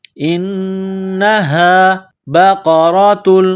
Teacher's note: انہا نون مشدد ہے تو آواز ناک میں لے جانا ہے. غنہ کرنا ہے.